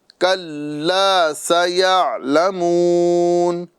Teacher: سین کی آواز سیٹی کے ساتھ نکالیں گے